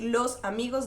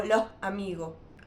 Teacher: en Islas Canarias también se elide o se aspira la S a final de palabra o a final de sílaba